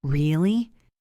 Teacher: If I say it flat, really, it sounds bored or sarcastic. But if I go up at the end, really, it shows surprise. If I go down really, it shows agreement or disappointment.